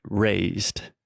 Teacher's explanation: they're adding that extra ed sound when most of the time it's not necessary · So just imagine a T sound at the end.